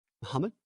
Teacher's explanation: It sounds like your first syllable is unvoiced.